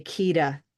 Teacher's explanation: If they don't have the tapped R, maybe they'll notice it and they'll use their D sound and say Kida